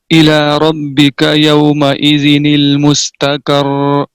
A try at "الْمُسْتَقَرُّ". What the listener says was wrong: مستقر، یہ ہے مستقر، کر نہیں، مستقر. جتنی آپ نے کی ہے نا اس سے آدھی کر.